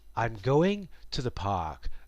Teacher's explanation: The pitch is also higher on the stressed words. With the exception of “park” the pitch remains lower as it helps others to understand that I have finished my sentence. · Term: melody